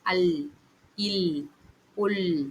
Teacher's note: நாவின் நுனி மேல் முரசை தொடும்போது ஒலிக்கப் பெறுகின்றது.